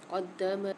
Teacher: دال پر مشدد ہے تو اس کو سختی اور جماؤ کے ساتھ پڑھیں گے